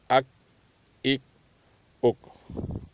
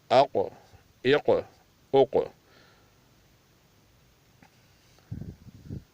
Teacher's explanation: آگے اک اک اک، یہ چھوٹا کاف ہے، اس کو بغیر کلکل کے ادا کرنا پڑے گا، پتلا بھی ہے اور بغیر کلکلی کے، اک اک اک، اور یہ دو نقطوں والا کاف یہ کلکلے کے ساتھ ادا ہوگا اور موٹا بھی ہوگا